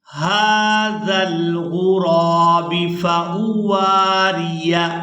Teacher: واو کو الف مدہ کی وجہ سے کھینچ کر ادا کریں گے